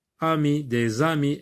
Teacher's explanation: S avec A, ça devient ZA. S avec A, la liaison.